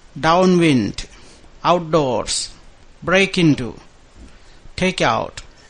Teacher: I think when you have a verb plus a preposition, it's break into, take out, outdoors, downwind. So we put the stress on the second word in these particular words here